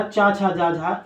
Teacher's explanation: चा, छा, जा, झा, इनको बोलते हैं तालु से, यानी कि जीभ हमारी कहाँ छूती है? तालु में छूती है।